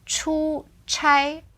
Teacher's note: so it's two first tones here